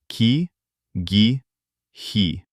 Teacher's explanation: On ki, my tongue moved forward and felt like it stroked the palate.